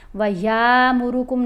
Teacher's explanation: الف کے اوپر جب کوئی حرکت آ جائے نا تو پھر وہ حمزہ پڑھا جائے گا. جب یا کو حمزہ سے ملائیں گے تو چھوٹی آواز ہوگی، لمبی آواز نہیں بنانی